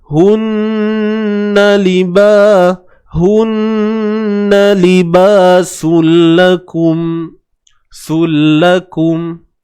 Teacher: memasukkan bunyi tanwin ke dalam lam. Tapi hakikat ada, hasil yang kita dengar nanti seolah-olah dah tak ada langsung bunyi. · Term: idgham